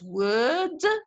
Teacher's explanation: It can be pronounced as word, which is British English, without pronouncing the R. When the R occurs before a consonant in British English, it is not pronounced. But this is not so in American English.